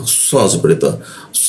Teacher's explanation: Sh itu di belakang gigi ya posisinya di gigi bagian bawah lidahnya dilengkungan dia